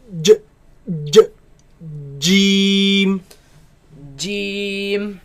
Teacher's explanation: It is a solid letter. The makhraj of it completely closes.